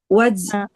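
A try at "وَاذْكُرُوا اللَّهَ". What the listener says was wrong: Eh, enggak boleh waj. Satu huruf dulu. Waz.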